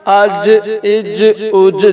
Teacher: جیم پہ قلقلہ ہوگا کیونکہ یہ حروف قلقلہ میں سے ہے